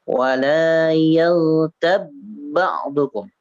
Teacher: di huruf ba itu jangan dikolkolahkan ya. Jangan dikolkolahkan, tapi di apa namanya, diidghamkan, dimasukkan.